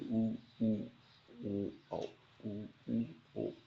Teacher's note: जिन स्वरों के उच्चारण में स्वर ओंठ व्रतमुखी गोलाकार होते हैं उन्हें व्रतमुखी स्वर कहते हैं।